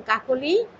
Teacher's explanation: যেমন কাকলি কর সাথে মধ্য অ, ক যেটা মধ্য অ হলো কর সাথে, এই ক ওকার হয়ে গিয়েছে